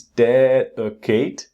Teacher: Again, second syllable is not strong.